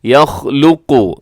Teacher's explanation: اس میں خا موٹا ہے، لام باریک ہے، آخر میں قاف جو ہے یہ موٹا ہے